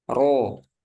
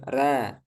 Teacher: ketika ro berharakat fathah ro nah ini tebal